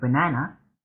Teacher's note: in the first syllable of the word banana the a makes a schwa